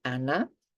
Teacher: the vowels in the Italian um language are open vowels and there it's a short sound